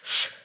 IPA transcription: ш